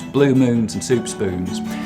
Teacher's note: I'll start off with very fronted goose vowels